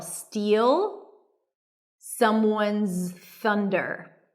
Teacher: To pronounce this phrase, steal, that's a high E and a dark L